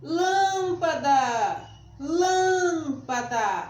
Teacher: a sílaba tônica é lan e é acentuada